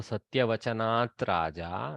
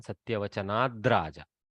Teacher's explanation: the takara, harsh takara, has changed to the third column dakara, soft dakara, to go with the following letter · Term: jastva sandhi